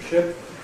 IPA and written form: ʃɪp (ship)